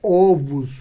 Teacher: a pronúncia correta da palavra ovos é ovos com a vogal aberta